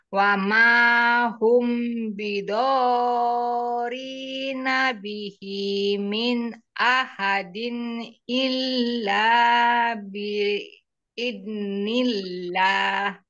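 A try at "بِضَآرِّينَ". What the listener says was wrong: Boleh di ini ditekan di ro. Wa ma hum bidorri.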